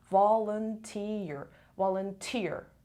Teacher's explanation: so the stress is on the volunteer volunteer on the third syllable